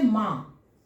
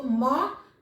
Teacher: अनुनासिक, अनु का अर्थ हो गया पीछे, नासिक का अर्थ हो गया नाक, यानी वैसा शब्द जिसका उच्चारण करने में मुंह से तो ध्वनि निकल रही है, साथ साथ उसके पीछे नाक से भी ध्वनि निकल रहा है